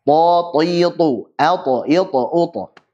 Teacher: Jadi sifat tambahan ta punya sifat qalqalah dan ta itu tebal.